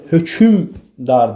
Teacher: burda ortalığa bir ü səsi daxil olur. Hökmdar deyə tələffüz olunur.